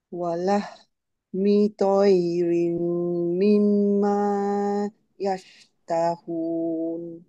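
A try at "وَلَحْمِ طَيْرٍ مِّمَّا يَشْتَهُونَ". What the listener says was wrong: Antara mimma dengan yastahun. Cuba sambung dia tanpa putus suara tengah-tengah.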